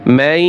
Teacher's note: নাকের ভিতরে যাবে, অস্পষ্ট হবে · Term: গুন্না